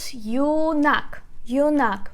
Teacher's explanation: We put stress on the second syllable.